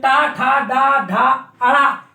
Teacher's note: इनमें जीभ का स्पर्श होना, टच होना जरूरी है। जब टा ठा डा ढा अड़ा ये वर्ण उच्चारित करेंगे अपन, तो मूर्धा में जीभ का टच होना आवश्यक होगा, तो इसलिए इनको मूर्धन्य वर्ण कहते हैं।